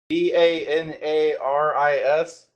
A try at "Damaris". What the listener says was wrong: No, it's a M, not an N. Damaris. Actually pronounced it Damaris.